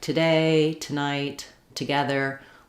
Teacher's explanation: When the to is unstressed, it just sounds like t rather than to. · We reduce that first vowel and it's a schwa sound. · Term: reduction